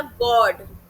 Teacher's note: Rounded open हो जाते हैं जब मैंने बोला गॉड। गोल हो गए और मुंह खुल गया।